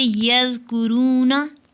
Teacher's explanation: ज़ाल की आवाज़ बारीक और नरम होती है, जैसे यज़कुरूना, इसको बारीकी से पढ़ेंगे, बारीक और नरमी से पढ़ेंगे, जैसे यज़कुरूना।